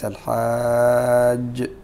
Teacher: تكون هنالك قلقله كبرى كبرى لان حرف القلقله مشدد والجيم حرف قلقله